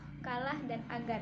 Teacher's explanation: sehingga konsonan hambat seller tak bersuara dan bersuara yaitu k&g dihasilkan menempel belakang lidah pada langit-langit lunak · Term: Konsonan hambat velar